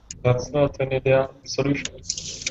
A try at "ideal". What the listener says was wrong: Listen, ideal. Repeat, ideal. Ideal with an L. You can prolong the L a little bit because if you say it short, it sounds like idea. So you've got to kind of prolong the ending. Idea, ideal.